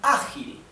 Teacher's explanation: The accent is in the first syllable.